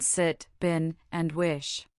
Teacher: But I is equally known for its short sound, I, a quick, relaxed, and high vowel as in sit, bin, and wish.